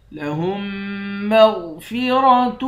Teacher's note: میم کو میم کے ساتھ ملا کر میم پر غنہ کریں گے، غین کو موٹا پڑیں گے، را کو بھی موٹا پڑیں گے